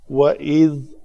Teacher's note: ذال کا مخرج ہے نوک لسان جب اوپر والے دونوں دانتوں سے آ کے ٹکراتی ہے۔ وَإِذْ أَخَذْنَا مِيثَاقَكُمْ لَا تَسْفِكُونَ دِمَاءَكُمْ۔